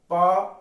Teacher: प दोनों होठों का यूज हो रहा है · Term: ओष्ठ व्यंजन, ओष्ठ